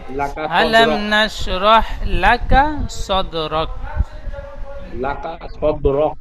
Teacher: যেমন, যেমন আলাম নাসরহ, আলাম নাসরহ লাকা সদরক, লাকা বলে কাবে টান দিচ্ছেন, কাবে টান হবে না। লাকা আলাম সদরক, নাশরাহ লাকা সদরক।